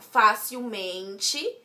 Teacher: Logo, está acentuado no Fá. Ao juntar com o mente, o acento se mantém no Fá.